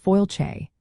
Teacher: That word is fáilte, which means welcome, and it is pronounced fáilte. The sound is much softer than you might initially think, with the stress falling clearly on the first syllable.